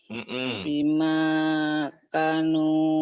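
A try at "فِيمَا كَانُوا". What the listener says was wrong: Fi-nya panjang.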